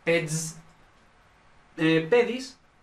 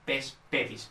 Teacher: Y luego, ped, que esto propiamente debería ser peds, pedis, pero es pes pedis, porque el nominativo pierde la D cuando se le añade la S